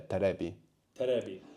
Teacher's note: there's no V sound really in Japanese, so we get a B there, terebi. Terebi.